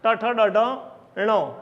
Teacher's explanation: આટલા વર્ણો મૂર્ધામાંથી ઉચ્ચારે છે, માટે એમને મૂર્ધન્ય વર્ણો કહે છે